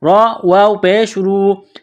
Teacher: را کو موٹا کرنا ہے، را کے اوپر پیش ہے ، را کو واو کے ساتھ ملانا ہے، را واو پیش